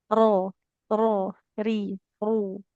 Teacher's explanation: Cuman sifat takrir atau getarnya. Nah getaran di huruf ro itu jadi enggak kayak huruf R di bahasa Indonesia. Yang banyak getarnya seperti itu ya. · Nah, jadi huruf ro itu getarnya sedikit aja.